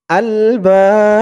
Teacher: জবরের পরে খালি আলিফ, প্রথমত এক আলিফ টান ছিল, তারপরে এই এক আলিফ টানের পরের অক্ষরে অক্ফ হওয়ার কারণে এক আলিফ টানটা তিন আলিফ টান হয়ে গেছে। বা বলে তিন আলিফ টান দিয়ে এই বাকে ধরতে হবে, বার নিচে জেরটা সাকিন হয়ে যাবে, আলবাব, তিন আলিফ টান মধ্যে আরজি।